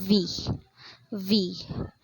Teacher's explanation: this is a sound that requires the involvement of the teeth and lips which involves the upper teeth and lower lip so I have here the for example is letter v v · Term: labio Dental sounds